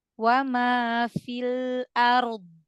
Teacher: Lidahnya nempel aja di makhraj huruf dal, tapi yang ditekan yang bagian sisi lidah ke geraham gigi atas, ya, ke gusi geraham gigi atas, bagian dalamnya ya.